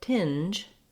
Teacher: So to say tinge, I just lift for my N and then I add my J sound. My tongue is starting in that similar position to the N, and then it's just dropping down for the J.